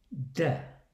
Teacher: the tongue is on the palate just above the upper teeth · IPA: /d/